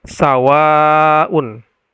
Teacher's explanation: Kemudian ada mad, setelah mad itu ada hamzah dan sawa itu berada dalam satu kata. Jadi sawaun dibaca panjang 4 sampai 5 harokat. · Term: mad wajib muttasil